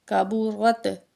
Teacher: تو آگے ہے کاف زبر کا، با پیش بو، را زبر تا، رت، را کے اوپر زبر ہے، تا کے ساتھ ملائیں گے، را کو موٹا کر کے پڑھیں گے، اور یہ باریک کاف ہے